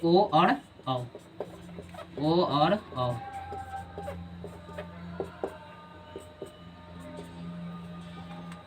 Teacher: ओ और औ का उच्चारण स्थान कंठ ओष्ठ